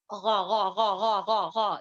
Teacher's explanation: غائن جو ہے یعنی کہ ہماری زبان کی جڑ جو ہے بلند ہوگی